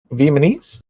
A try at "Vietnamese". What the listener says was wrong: Vehemently? It's Vietnamese. There's an obvious T in there.